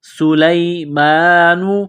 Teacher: سین میں سیٹی کی آواز پیدا کریں گے، سین کو باریک کریں گے، لام کو یا کے ساتھ ملانا ہے۔